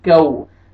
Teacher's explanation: کل، لام کو آپ نے نہیں ہلانا، کل ایسے نہیں پڑھنا، کل۔ واو لین، واو سکون سے پہلے فتحہ، آپ نے کاف کو نرمی سے ادا کرنا ہے